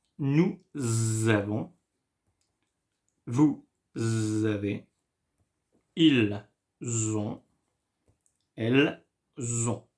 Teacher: When words end in S and the following words starts with a vowel, we make the link, la liaison, between these two words.